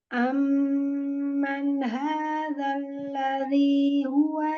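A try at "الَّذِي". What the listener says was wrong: Jangan dibanting, zal kasrohnya. Alladzi, ujung lidah aja. Ladzi, jangan banting. Alladzi. Alladzi. Turunkan rahang dan bibir bawah. Ladzi.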